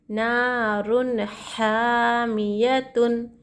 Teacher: بلا غنہ کے پڑھیں گے تنوین کی اور نون کی آواز کو ظاہر کر کے پڑھیں گے ٹھیک ہے یہاں پر اظہار کا قاعدہ ہو رہا اس لیے